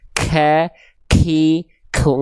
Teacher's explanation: Ada percikan nafasnya sedikit tapi ya bukan berlebihan